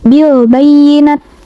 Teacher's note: alif lamnya dibaca jelas, huruf ya bertasydidnya ditekan, dan bacaan natnya ini dipanjangkan 2 harokat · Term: alif lam komariah